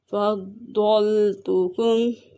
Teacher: ضاد کو پر پڑھیں گے، ضاد حروف مستعلیہ میں سے ہے، میم کو ظاہر کر کے پڑھیں گے، اظہار شفوی کا قاعدہ ہو رہا ہے۔